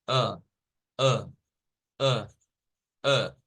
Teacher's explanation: la lengua está como quietecita, en posición normal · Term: schwa